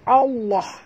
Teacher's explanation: Sebab itu kita kena baca jod. Dan lam yang di tengah-tengah, lam pada lafaz jalalah dibaca tebal.